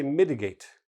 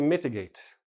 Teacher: So, in England, they probably say: midigate, in America, they say: mitigate.